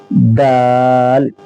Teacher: زبان کی نوک اور ثنایا علیہ کی جڑ، سامنے کے جو دو دانت ہیں اوپر والے ان کی جڑ، دال۔